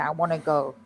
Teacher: And again, we've got that American wanna, which is really want to, I want to, but when we speak quickly, you don't hear the T.